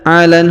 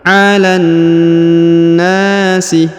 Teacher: huruf la langsung sambung ke alif lam syamsiyah ini pada huruf na yang berharokat tasdid. Alan nasi, ya ditahan dan ditekan lalu dipanjangkan 2 harokat.